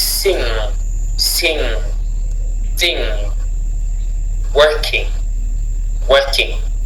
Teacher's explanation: In English, you don't say sing. The sound G doesn't intervene here.